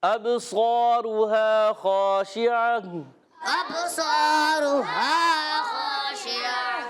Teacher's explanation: شین ادا ہوتا ہے زبان کے درمیان تالو کے درمیان سے · عین حلق کے درمیان والے حصے سے ادا ہوتا ہے